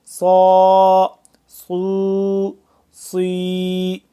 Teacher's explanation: صاد کو سیٹی کی آواز اور اس کے ساتھ ساتھ موٹا بھی کرنا ہے